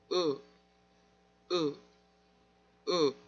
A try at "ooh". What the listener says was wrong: I can hear like this. Be careful. This sound is very close to schwa. You're constricting this part too much. You're doing this. You're putting too much pressure.